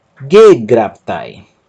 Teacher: perceba que a sílaba tônica é a antepenúltima